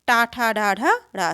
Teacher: टा ठ ड ढ ड सभी मूर्धन्य है